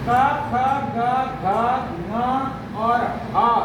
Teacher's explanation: जीभ का बिल्कुल निचले वाला सिरा पहले एक बार आपके गले को चौक करता है, फिर उसके बाद उसको खोलता है, छोड़ता है। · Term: कंठ्य